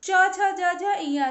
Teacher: तालु से बोले जाते हैं तो इन्हें तालव्य अक्षर कहते हैं और ये च वर्ग के होते हैं।